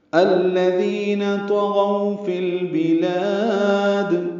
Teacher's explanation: غو واولین ہے، ہونٹوں کو آگے لائیں گے، نا تمام گول کریں گے